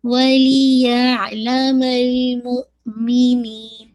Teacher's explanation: حمزہ پہ جھٹکا دیجیے گا